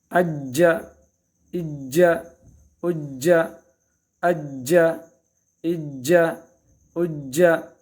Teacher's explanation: آواز حرف مشدد کو سختی کے ساتھ پکڑنا ہے، اور یہ چونکہ قلقلہ میں سے ہیں اس میں مزید حرکت دینی ہے۔ اج، اج، اج، اج، اج، اج۔ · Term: جیم مشدد